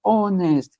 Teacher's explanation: Esse H é mudo. O primeiro som que nós temos é som de uma vogal.